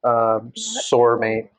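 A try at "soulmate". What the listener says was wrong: Why do you say it like it's sore? It's sore, like sore. Like soaring.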